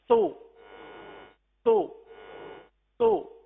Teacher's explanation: فوراً ہی ہونٹ گول ہو رہے ہیں اور پھر اپنی اصلی حالت میں آ رہے ہیں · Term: پیش